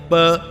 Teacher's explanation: इसका ओष्ठ स्थान और स्पृष्ट प्रयत्न दोनों ओष्ठों को मिलाकर बोलना